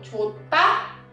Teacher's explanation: en el verbo chota se hace marcada la ta y se hace aspirada